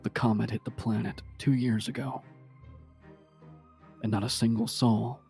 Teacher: I just dropped my voice and make it really breathy